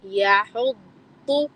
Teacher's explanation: ضاد یعنی کہ زبان کا پچھلا حصہ اوپر لے جانا ہے تاکہ ضاد موٹا آئے